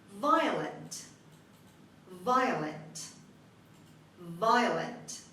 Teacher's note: The stress is on the first syllable and I is pronounced as I. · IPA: /ˈvaɪələnt/